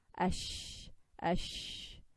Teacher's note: sheen comes from the middle of the tongue.